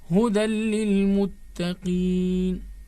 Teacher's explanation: This Huda ends with Tanween, and immediately after that, Lam is there, which is Mushaddada. The only assimilation will take place without ghunnah. This Lam, Mushaddada, this Tanween is not going to be nasalized.